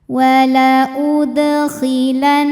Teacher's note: Dal sukunnya asli dan ada di tengah bacaan dibacanya memantul dengan pantulan yang kecil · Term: Qalqalah Sugra